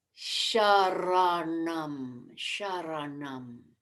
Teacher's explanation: nasal is with the tongue back in the cerebral